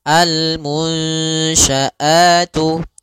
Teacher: alif lam yang ditulis dan dibaca yaitu suara lamnya terbaca dengan jelas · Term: alif lam Qariah